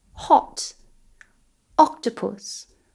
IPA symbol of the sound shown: ɒ